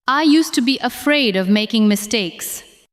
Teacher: I used to be afraid of making mistakes. Again, with a clear beat on afraid and mistakes